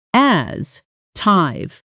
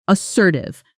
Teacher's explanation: Notice the stress falls on the second syllable, as assertive, not assertive.